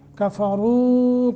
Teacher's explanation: کفروا، را کو پر پڑھنا ہے کیونکہ پیش ہے، اور پھر واو ساکن ما قبل ضمہ پیش ہے، یہ حروف مدہ بھی بنتا ہے، اس لیے اس کو لمبا کر کے پڑھیں گے